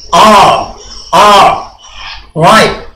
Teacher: R lidah melengkung di atas, tidak sampai ke langit-langit. R, right.